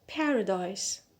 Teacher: So here the stress is on the first syllable, which is pa.